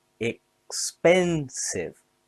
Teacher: Expensive has three syllables stress on pen.